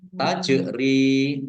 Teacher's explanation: jim sukun bacaan kolkola dibaca memantul, ditahan ditampakkan pantulannya